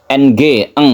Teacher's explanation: Nun bertemu dengan qf ini kita samarkan ikhfa artinya samar membacanya itu seperti Huruf Eng